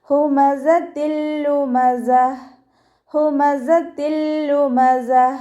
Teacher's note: താ മർബൂത്തയിൽ നമ്മൾ നിർത്തുമ്പോൾ ഹാ സുക്കൂനിൻ്റെ ഒരു സൗണ്ടിൽ വേണം നിർത്താം